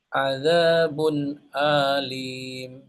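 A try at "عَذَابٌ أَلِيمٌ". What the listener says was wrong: Ah, maaf hamzahnya, Pak.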